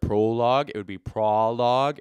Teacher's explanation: it's just adding more of a ah sound in front of the ooh vowel